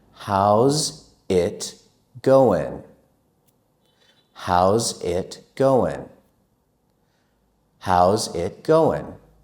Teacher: We will change how is to how's. Also, we will change going to goin'.